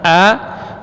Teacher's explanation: A, huruf yang keluar dari pangkal tenggorokan. Kalau qaf tadi di pangkal lidah, kalau hamzah di pangkal tenggorokan.